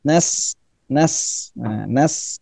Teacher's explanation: makhrajnya dari ujung lidah dan ujung gigi seri atas bawah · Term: sin